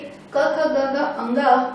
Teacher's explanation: हमारा कंठ और जीभ का यूज करके इसका उच्चारण किया जाता है